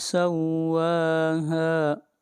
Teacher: واو کے اوپر بھی مد اصلی ہے اور ہا کے اوپر بھی، ان کو 1 الف کے برابر کھینچ کر پڑھا جائے گا